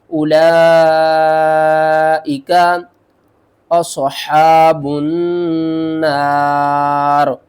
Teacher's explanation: اس مد کو ہم مد متصل کہتے ہیں، بڑی مد بھی کہتے ہیں، اور اس کو ہم نے 5 الف کے برابر کھینچ کر بھی پڑھنا ہوتا ہے۔